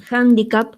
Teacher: aparece una hache aspirada